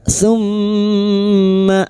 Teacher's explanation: Mim yang bertasdid gunna musyadadah kita dengungkan selama tiga harakat